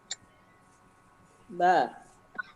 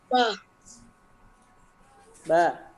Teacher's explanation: Sifat jahar itu ditahan nafasnya. Tidak boleh keluar nafas.